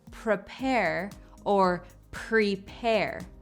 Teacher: of the times the pronunciation of this word could change regionally sometimes you hear it pronounced as prepare the E will take on a slight a sound prepare or prepare both of these are correct and feel free